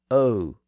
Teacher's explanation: the modern pronunciation as o which is actually a diff thong the modern sound is really the o sound followed by a slight ooh sound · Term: diphthong